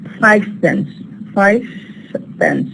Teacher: we don't produce V but we say F why because now the neighboring sound is p the neighboring sound · Then we have the change to fa. So va voiced becoming fa voiceless because the following sound here is voiceless, which is pa. Total assimilation, when you have identicality here, we have a case of identicality.